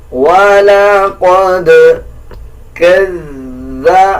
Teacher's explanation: دال کے اوپر جزم ہے, قلقلہ کیا جائے گا